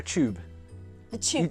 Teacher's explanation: so when it's tu, we say ch, like the tube. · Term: ch sound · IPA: [tjuːb]